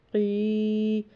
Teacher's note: قاف 2 نقطوں والا ہے، یہ موٹا پڑا جاتا ہے، پر پڑا جاتا ہے، حلق سے پڑا جاتا ہے، اور آگے یہاں پر یا ساکن ہے، قاف کے نیچے زیر ہے، یہ بھی حروف مدہ کی رول سے جب زیر ہو اور آگے یا ساکن آ رہی ہو تو ایک الف کے برابر لمبا کریں گے۔